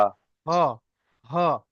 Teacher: ছোট হা, অর্থাৎ মোটা আওয়াজ, গম্ভীর ভাবে হবে